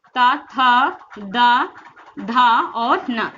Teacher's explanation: इसका उच्चारण स्थान दंत से होता है। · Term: ता वर्ग